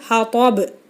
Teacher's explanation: சுக்குன் பெற்ற பா கல்கலாவுடைய எழுத்து, அப்போ வந்து ஹா தாப் அப்படின்னு அசைச்சி நம்ம நிறுத்தணும்